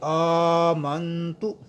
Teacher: حمزے کے اوپر کھڑا زبر ہے، اسے ہم لمبا کریں گے ایک الف کی مقدار